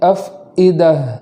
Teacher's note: فا کے بعد جو حمزہ ہے اس کو خوب جھٹکے کے ساتھ پڑھیں گے